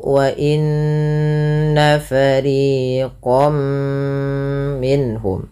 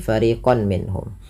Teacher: Kalau huruf setelahnya mim, maka masukkan tanwinnya bunyi nun ya mengganti dengan bunyi mim. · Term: idgham bighunah